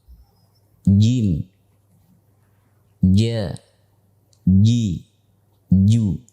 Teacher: Para jamaah yang dimuliakan Allah, para pemirsa sekalian, Syekh Aiman Rusdi Suwaidi ketika menjelaskan bait ini, yang dimaksudkan dengan tengah lidah itu adalah wasatul lisan ma'a hanakil a'la. Tengah lidah yang ditempelkan dengan al-hanakil a'la, yaitu langit-langit mulut bagian atas. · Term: huruf jim